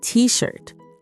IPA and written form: tiː ʃɜːrt (t-shirt)